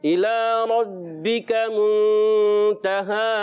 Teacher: را کو پر رکھنا ہے، با کو پکڑنا بھی ہے